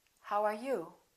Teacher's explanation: wh questions have falling intonation